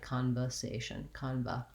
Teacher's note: the ER sound might get a little bit too relaxed. Because it's not stressed, it's not important in this word, you might be saying this more like conversation, conva.